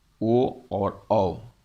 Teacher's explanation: फिर कंठ और तालु से बोले जाने वाले 2 वर्ण ही है जिसका नाम है कंठ तालव्य, जो आते हैं ए, ऐ। पुनः कंठ और ओष्ठ से बोले जाने वाले जो वर्ण हैं वे आते हैं ओ और औ, जो कंठोष्ठ के नाम से जाने जाते हैं।